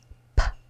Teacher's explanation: That's just a pop of air. There's no vocal cords moving there.